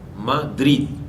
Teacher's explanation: Cuando hablamos una palabra, Madrid, estoy colocando en drid mayor pronunciación. Esa palabra no lleva acento necesariamente ortográfico, quiere decir que no tiene una representación gráfica. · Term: acento prosódico